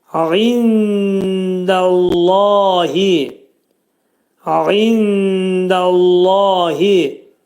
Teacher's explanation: Ayn hərfi boğazın ortasından çıxarılır.